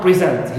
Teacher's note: instead of stressing the first syllable in present, I stress the second syllable in present · Change in the vowel, first vowel of the adjective we reduce it to e, to short e, to become present. Here, thanks to this change, of stress placement, as also reduction of the vowel a to e, I can distinguish between the adjective present and the verb present.